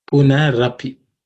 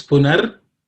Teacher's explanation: The visarga in the word punaha changes to ir when it joins api. So that ir plus a becomes ra.